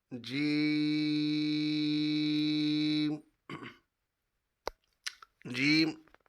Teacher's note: اگلا حرف جیم۔ جیم جیم زبان کے درمیان اور تالو کے درمیان سے ادا ہوتا ہے، اور اس کی ادائیگی میں تھوڑا سا اس کو کھینچ کر پڑھنا ہے ہم نے، تیزی کے ساتھ نہیں پڑھیں گے، مکمل اس حرف کو ادا کریں گے۔